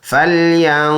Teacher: فلینظر الانسان الى طعامہ، فلم زبر فل، یا نون زبر ین، ناک میں آواز لے کے جائیں گے 1 الف کی مقدار